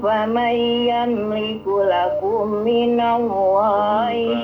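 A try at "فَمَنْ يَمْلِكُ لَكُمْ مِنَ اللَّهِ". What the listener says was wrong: Yamliku lakum minat, dengungnya kurang lama ya. Alhamdulillah, tinggal bagaimana dengung-dengungnya dilengkapi.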